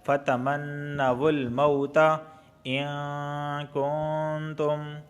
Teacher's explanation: نون ساکن کے بعد کاف آیا ہے تو اخفا والا غنہ ہوگا